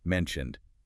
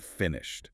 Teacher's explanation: the ed on mentioned sounds like a D, but on finished, it sounds like a T